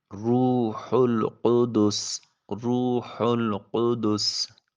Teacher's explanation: واو ساکن ہے اور اس سے پہلے والے حرف کے اوپر پیش ہے، واو مدہ ہوگی، اس کو ایک الف کے قیم مقام لمبا کیا جائے گا۔ ہا کو حلق سے ادا کریں گے۔ قوف پھر اسی طرح حلق کے کوے کے ساتھ جب زبان کی جڑ لگے گی تو قوف ادا ہوگا۔